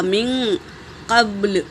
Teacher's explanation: با پر سکون ہے تو قلقلہ ہوگا